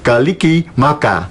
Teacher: Well, that is almost unrecognizable for us as Christmas, but Kaliki is kre, right? So the K is there, the R of Christmas is changed into an L, Kali. And then ki, so this ki, that's the st of Christmas, Right?